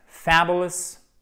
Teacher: accent tonique sur la première syllabe, c'est marqué ici, avec un A court, d'accord?